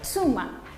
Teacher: los japoneses no usan el sonido tu, sino que dicen tsu. Es como la tsu que encontramos en tsunami, justamente.